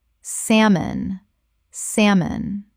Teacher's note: The l is completely silent. Two syllables only.